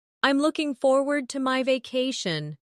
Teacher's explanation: Notice the smooth connection between looking and forward.